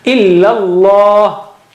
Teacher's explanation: Illa, that also is flat, okay, and Allah is thick. The word Allah, the lam of word Allah is thick.